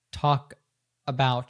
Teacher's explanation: So talk about, she doesn't say talk about, but she connects the K to the A as if it were an article and says talk about.